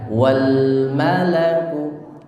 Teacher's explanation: lam disukun, tidak boleh mantul, wal malaku, tapi ditekan, wal malaku.